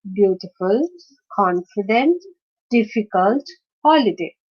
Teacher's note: in this case again difficult so d requires more pressure so the stress is on the first syllable